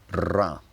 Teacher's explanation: he consistently trills his R's, ra, throughout the clip, and at first I couldn't tell whether this was a theatrical thing or genuinely something he would do in natural speech.